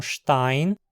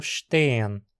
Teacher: Onde o alemão tem o ditongo ei, o Hunsrückiano tem e.